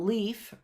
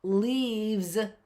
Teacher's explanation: And you can hear that that F changed to a V.